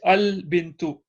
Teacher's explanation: Because it comes first at the start, the hamza is pronounced, so it's al bintu. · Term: Hamzatul wasl